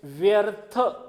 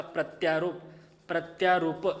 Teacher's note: या ई बद्दल य बनतो आणि पुढचा अ त्याच्यामध्ये जाऊन मिसळतो. म्हणजे आपल्याला इथं कंप्लीट य पाहायला भेटतो.